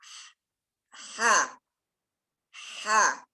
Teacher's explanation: Ha ketika kita ucapkan, ha itu kita mengalirkan suara dan nafas.